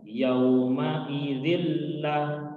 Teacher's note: Di sini ada tanwin kasrotain bertemu dengan lam, ya, dalam hukum tajwidnya disebut dengan idgham bila gunnah. Artinya kita masukkan, ya, dzillah ke dalam huruf lam, namun tidak boleh kita tahan. Ya, kita lewat saja.